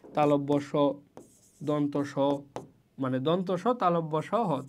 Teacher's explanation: দুইটা বাকযন্ত্র কাছাকাছি আসবে কিন্তু একত্রিত হবে না, একটু ঘর্ষণের মতো সৃষ্টি করবে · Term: ঘর্ষণজাত ধ্বনি